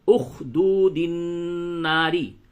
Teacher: دال کو نون سے ملائیں گے